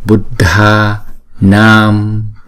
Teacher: chúng ta phải đọc thời lượng nó kéo dài hai nhịp so với chữ A bình thường